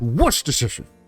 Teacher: As long as you get the first syllable with some oomph, it's Worcestershire.